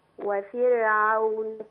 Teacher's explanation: والأجمل لو راعينا ترقيق الراء في كلمة وفرعون